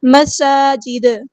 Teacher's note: دال کو ہم ساکن کر دیں گے اگر ہم یہاں پہ وقف کریں گے. جب دال کو ساکن کریں گے تو یہاں پہ قلقلہ ہوگا